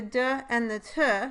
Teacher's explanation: d and the t or the d and t consonants are made by completely stopping airflow by touching the tongue blade to the alveolar ridge and raising the sides of the tongue against the teeth so